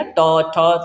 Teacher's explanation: जीभ जाके कहां पे टच होती है मुर्धन्य पे टच होती है